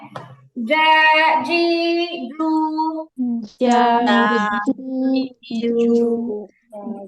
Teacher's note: জিহ্বার মাঝখান উপরে তালুর সঙ্গে লাগবে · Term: জিম